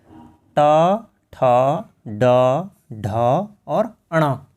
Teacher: इनको कहा जाता है मूर्धन्य, अर्थात मूर्धा से छूती है जब हमारी जिह्वा।